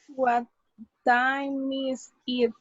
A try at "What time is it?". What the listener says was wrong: You need to join it. Remember, you need to join it. It's time is it. What time is it? Together, what time is it? All of it. What time is it? What time is it?